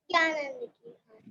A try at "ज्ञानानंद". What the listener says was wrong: ज्ञानानंद। तुमने ज्ञानंद बोला, ज्ञानंद, ज्ञानंद नहीं, ज्ञानानंद। ज्ञान और आनंद दो चीजें है ना, उनको मिलाया तो ज्ञानानंद।